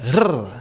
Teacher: There's a common r sound which is usually trilled or rolled like rrr.